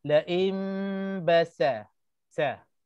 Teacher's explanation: Pastikan sa tu tak berubah sifat, jangan tebal, jangan jadi to